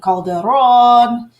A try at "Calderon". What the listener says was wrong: You can roll your R's a little more. It's Calderon. Calderon, yes.